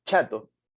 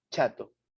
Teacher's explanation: Si yo digo chato, para manifestar la che chato, primero impido que el aire salga, pero al pronunciar la che, ya dejo nomás que el aire salga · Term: africada